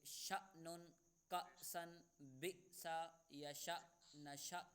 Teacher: ہم نے حمزہ ساکنہ کو جھٹکا دے کر پڑھنا ہے